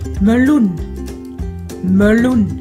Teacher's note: trong chữ meloen này trọng âm nó ở âm tiết thứ hai, cho nên chữ e này được gọi là stomme e